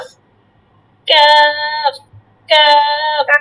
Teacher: তারপর হচ্ছে 5 নাম্বারটা বলেন। জিহবার গোড়া হইতে একটু আগে বাড়াইয়া তার বরাবর উপরে তালুর সঙ্গে লাগাইয়া উচ্চারিত হয়।